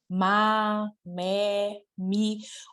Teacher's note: Qual é o ponto de articulação do M? É bilabial.